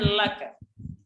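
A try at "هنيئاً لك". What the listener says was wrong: Ini ada panjangnya, ada huruf mat, jangan lupa.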